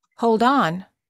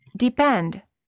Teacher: connect the final consonant to the next vowel, making it sound as if the second word starts with a consonant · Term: Linking consonant to vowel